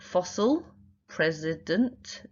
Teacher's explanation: fossil, president, that second syllable is really unstressed